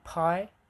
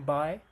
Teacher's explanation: voiceless P as in pi and voiced B as in by · there's two types of bilabial plosives, and voiceless P as in pie and voiced B